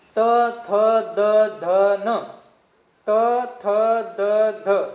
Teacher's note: इथं उच्चारण करीत असताना तुमची जीभ कुठं लागत असते, दंताला लागत असते, म्हणजे दाताला लागत असते. म्हणून त थ द ध न यांचं स्थान काय आहे, दंत आहे.